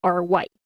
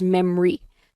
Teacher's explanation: So parang nawawala yung letter O. So that O is replaced by the schwa sound.